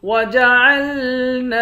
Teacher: نون کے بعد الف ہے، ایک الف کی مقدار کھینچ کر پڑھیں گے، الف حروف مدہ ہے۔